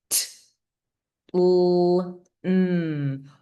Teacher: All 3 of those have their tongue in the same general position, right toward the top of your mouth, right behind your teeth, your front teeth. They overlap in where your tongue is.